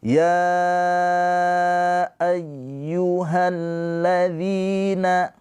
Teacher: Mad tobi bertemu dengan hamzah. Panjangnya ya ini dibaca panjang 4 atau 5 harokat ya. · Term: mad jaiz munfasil